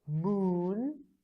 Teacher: The characteristics are, first, you have to push your lips towards into a circle. Then you have to pull your tongue up and back. And it is a long sound. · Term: lowercase u